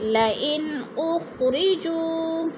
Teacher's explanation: جو پہ وہ مدہ ہے، وہ مدہ کو ایک الف دو حرکات کے برابر لمبا کر کے پڑھنا ہے۔